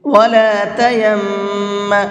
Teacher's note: 2 میم ایک ساتھ میں آتے ہیں تو پہلے میم کو دوسرے میم میں مکس کر دیتے ہیں اور ساتھ ساتھ غنہ بھی کر کے پڑھتے ہیں